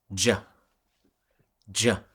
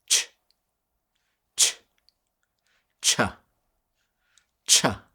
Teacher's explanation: the CH is the same sound but you turn your vocal cords off